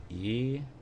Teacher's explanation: starting with uh an e sound that's the furthest front and the furthest forward